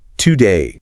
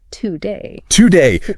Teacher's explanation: Because the first syllable is unstressed, that O cannot retain its full shape. It must shrink to maintain the rhythm. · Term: schwa